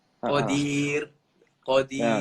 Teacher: Itu sifat ra. Sifat ra kalau dia baris bawah, dia mesti kena baris rendah. Maknanya kena bunyi dia nipis. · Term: Ra nipis